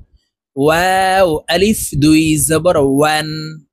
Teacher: ওয়াও হরফ দুই ঠোঁটের মাঝে ফাঁকা রেখে ঠোঁট গোল করে উচ্চারণ করব